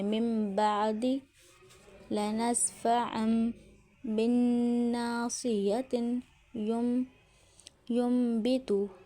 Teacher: نون ساکن تنوین کے فوراً بعد با آ جائے تو نون کی آواز کو میم میں بدل دیتے ہیں۔ نون کے اوپر چھوٹا میم لکھا ہوتا ہے، ہونٹ دباؤ کے بغیر ملاتے ہیں اور دو حرکت ٹو کاؤنٹ کا غنہ ہوتا ہے۔ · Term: اقلاب